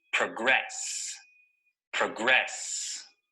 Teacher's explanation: notice that the stress is on the second syllable